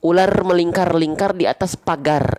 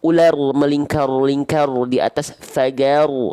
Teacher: Takrir itu artinya dia bergetar, tapi sedikit, samar-samar saja. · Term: sifat takrir